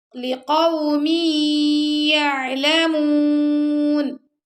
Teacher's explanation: میم کو ہم نے یا سے ملا ہے، ادغام اور غنہ کیا